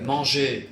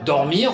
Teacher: Manger, on n'entend pas le R, Oui. alors que si je dis dormir, on entend bien le R à la fin.